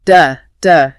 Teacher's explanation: >> Now, the traditional e d ending, that d sound is voiced. Your vocal cords actually have to vibrate to make a d.